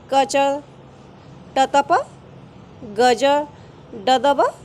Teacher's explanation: ये हैं 1, 3, 5 यानी कि अल्प प्राण। ये अल्प प्राण वर्ण हैं। इनके उच्चारण में हमें कम प्राणवायु की आवश्यकता पड़ती है।